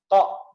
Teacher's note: Jadi cara membaca huruf qa ya bukan masalah terlalu dalam atau tidak, tapi diletakkan di tempatnya. Yaitu pangkal lidah sini nih ditaruh di langit-langit, ditaruh di daging lunak. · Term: huruf qaf